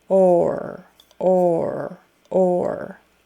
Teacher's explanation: you round your lips and then your tongue goes back for the r